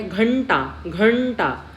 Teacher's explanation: घ च्या पुढे काय आहे तर ट आहे आणि ट या वर्गातील अनुनासिक व्यंजन काय आहे तर ण